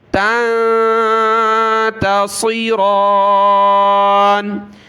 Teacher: وَنُحَاسٌ فَلَا تَنتَصِرَانِ، فَلَا تَنتَصِرَانِ، یہاں نون ساکن کا اخفا ہے، ناک میں آواز پیدا ہوگی۔ تنتصی، صاد اور را دونوں کلرفل ہے، دونوں کو موٹا پڑھنا ہے۔ را کے اوپر ایک کھڑا زبر ہے تو ایک الف کی مقدار اوپر کھینچیں گے۔